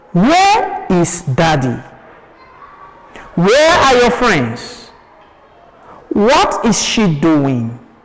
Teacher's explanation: Where is daddy? Where are your friends? What is she doing? All ends with a falling tone.